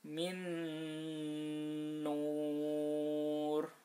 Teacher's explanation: Jadi nunnya itu tidak dibaca tapi langsung masuk ke huruf yang kedua. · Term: idgham bi gunnah